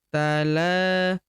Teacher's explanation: huruf la kita panjangkan dua harakat karena terdapat tanda alif kecil di atasnya yang ini.